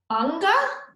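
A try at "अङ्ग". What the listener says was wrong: Yeah, right. Good job. So you just bring your tongue to the roof of the mouth.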